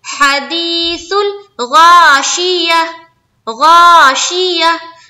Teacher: गैन मोटे हर्फ में से है, जो भी मोटे हर्फ में से है उसको मुंह भर कर निकलते हैं